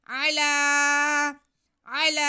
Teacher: عین پہ زبر، لام پہ کھڑا زبر، لام کو ہم ایک الف کے برابر کھینچیں گے